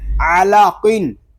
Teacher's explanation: اس میں قاف پر ہوگا، عین اور لام باریک پڑے جائیں گے